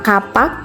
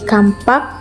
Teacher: Kata kapak mengalami proses penambahan bunyi m pada tengah kata menjadi kampak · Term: epetensis